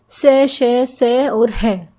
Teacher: इनके उच्चारण में जीभ तथा होठों के निकट आ जाने के कारण वायु घर्षण करती हुई बाहर निकलती है। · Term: संघर्षी व्यंजन